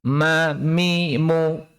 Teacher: Makhraj dari huruf mim sama dengan makhraj dari huruf ba, yang muncul dari pertemuan bibir atas dan bawah saat bibir tertutup. · Hanya saja bagi mim, hal itu disertai dengan ghunnah, ya. disertai dengan ghunnah, yaitu suara berdengung dari rongga hidung.